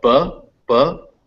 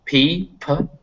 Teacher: the only distinction between these sounds is the voicing, which means are your vocal cords vibrating or are they not? So P, P, there's no vibration.